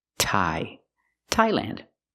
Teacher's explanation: the TH doesn't make a th or th sound, it makes a real T